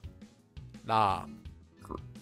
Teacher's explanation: This letter sounds like it's between an L and an R in English. However, it's neither an L or an R.